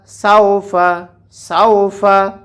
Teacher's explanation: এখানে এক আলিফ টেনে পড়তে হবে জবরের বাম পাশে খালি আলিফ আসার কারণে